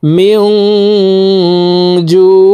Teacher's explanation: মিম নুন জের মিং, ইকফাহ গুন্না, নুন সাকিনের পরে ইকফার হরফ জিম আসছে, এই কারণে এই নুন সাকিনকে নাকের ভিতরে লুকাইয়া গুন্নার সহিত পড়ব